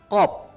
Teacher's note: Letak qaf langit-langit mulut bagian belakang. Qaf. Kemudian qaf ini keluarnya dari pangkal lidah dekat dengan tengkerongkongan yang dihimpitkan ke langit-langit mulut bagian belakang. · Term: huruf qaf